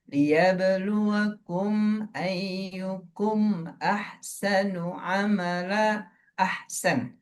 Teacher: Itu kan izhar tuh, tapi tetap ada dengung. Di mana? Di mim sukunnya. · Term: izhar syafawi